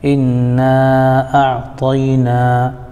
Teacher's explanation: نون پر کھڑا زبر ہے تو نا یہ الف مدہ کے برابر ہوتا ہے